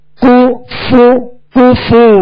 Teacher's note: دونوں کے پیش یہ صحیح سے ادا کریں گے، ہونٹوں کو گول بھی کریں گے اور بغیر کھینچے بغیر جھٹکا دیے معروف ادا کریں گے